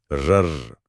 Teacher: जैसे र, इसे प्रकंपित या लुंठित कहा गया है। इसे बोलते समय जीभ आगे पीछे कांपती है, जैसे कोई इंजन स्टार्ट हो रहा हो।